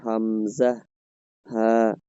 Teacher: গলার শুরু মানেই হলকের সরি হলকের শুরু হলো গলার শেষ। গলার শেষ ভাগ থেকে হলকের শুরু। এখান থেকে উচ্চারণ হবে